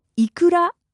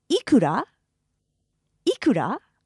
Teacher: because it's a question you'll notice the rising intonation